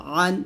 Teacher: আইন দুই জবর আন হলকের মাঝখান থেকে চাপে বলতে হবে